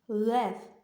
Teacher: чуємо приголосний твердий звук л